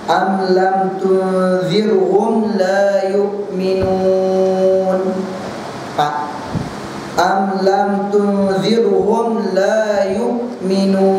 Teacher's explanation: Daripada 2 harakat ditukar kalau waqaf dengan paling aqal 4 harakat, 4 harakat, aksar 6 harakat, 6 harakat.